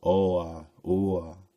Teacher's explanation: If we vocalize Oa, Ua, we find ourselves making a W sound between the two vowels.